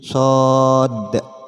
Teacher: kita tahu di penjelasan sebelumnya bahwasan Dal termasuk huruf Qalqalah artinya ketika Dal ini sukun terdapat pantulan